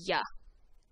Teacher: the pronunciation of the double l is a ya like a y in english